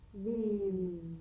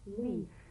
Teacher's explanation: If you don't have enough vibration in your V's, they'll end up sounding like the F